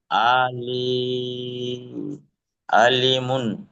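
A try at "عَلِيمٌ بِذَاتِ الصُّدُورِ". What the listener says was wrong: আলিমুম, কারণ দেখেন দু পেশের পরে বা এসছে, ইকলাবের হরফ। জি, আলিমুম, গুণনা করে পড়তে হবে।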